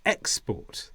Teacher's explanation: An export is goods that you are sending around the world, and the stress is on the first sound, export